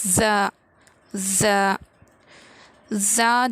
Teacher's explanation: زا جو ہے زبان کی نوک کو نیچے کے دونوں دانتوں کی جڑ میں لگانے سے ادا ہوتا ہے زا، مطلب پورا جڑ میں نہیں لگائیں گے، بس تھوڑا سا ٹچ کریں گے۔